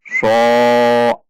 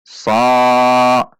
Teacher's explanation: huruf shad tidak dibaca dengan membulatkan bibir ketika fathah. Namun biasa saja, bukan so, namun sa.